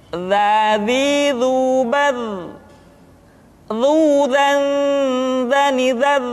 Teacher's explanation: Diucapkan dengan menyentuhkan ujung lidah dengan dinding dua gigi seri bagian atas seperti kita mengucapkan huruf tha. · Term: huruf za